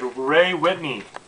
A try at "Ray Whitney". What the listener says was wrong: It's Ray, not Way.